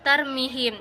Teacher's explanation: Pada ayat keempat yang berbunyi tarmihim bihijaratim min sijil, ada hukum baca mad tabi'i pada kata tarmihim, yang mana cara bacanya itu bunyi mi dipanjangkan dua harokat